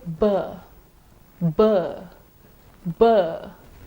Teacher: when you say b, b, b, you would notice some vibration of the vocal cords.